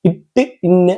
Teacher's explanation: சொர சுரப்பான பகுதி இருக்குல்ல அந்த பகுதிதான் என்ன அப்படின்னா அன்னத்தின் நுனி அப்படின்போம். அப்ப இட்டு இன்னு அப்படின்னு சொல்லி பாருங்களே அந்த பல்லுக்கு மேல இருக்கக்கூடிய சுர சுரப்பான பகுதியில போய் இந்த நாவினுடைய நுனியானது பொருந்தும்.